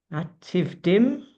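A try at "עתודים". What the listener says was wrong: I think it would be Atudim. There's no yud. There's no yud, so it can't be Atidim, which is the correct way of pronouncing it. It's written Atudim. Ayin Taf Vav Dalad Yud Mem. Atudim. So if you were just looking at that and did not know it, you would read Veliyot HaYehudim Atudim, which is not right.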